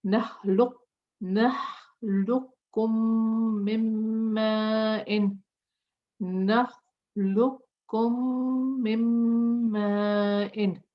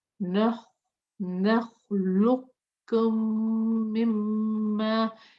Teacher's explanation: Here we are merging the lam with the kaf completely. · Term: idgham